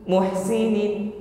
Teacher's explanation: huruf ha sukun sifatnya yang pertama nafasi alirkan nafas